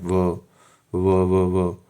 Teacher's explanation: संस्कृत में तो ये व जब हम उच्चारित करते हैं तो दंत और ओष्ठ से करते हैं। लेकिन हिंदी भाषा में जब हम व का उच्चारण करते हैं तो सिर्फ ओष्ठों का प्रयोग करते हैं।